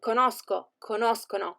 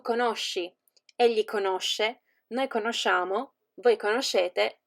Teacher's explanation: Io and essi have a hard sound in conoscere, for example, like sk, so conosco, conoscono, while the others are sweet, like sh